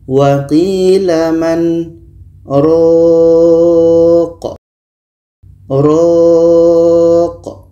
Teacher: Kita panjangkan ro-nya dulu, baru matikan huruf qa.